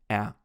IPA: æ